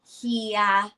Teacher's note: Hia with a flat tone. Hia means older brother.